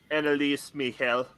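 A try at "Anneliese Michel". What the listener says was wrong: Yeah, except it's Annalisa. The E is pronounced as an A.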